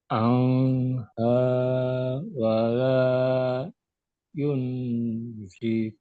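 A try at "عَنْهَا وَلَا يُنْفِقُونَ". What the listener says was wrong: Bagus. Jadi yang pertama ini dibaca jelas, Pak. Nggak pakai dengung.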